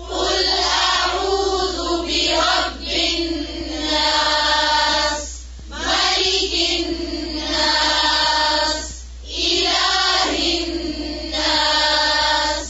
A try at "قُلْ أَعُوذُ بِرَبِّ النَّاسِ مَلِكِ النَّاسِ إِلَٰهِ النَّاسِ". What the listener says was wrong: ज़ेरों को और बारीक करें.